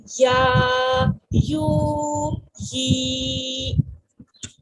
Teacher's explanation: ہم ان کی آواز کو ایک الف کے برابر کھینچ رہے ہیں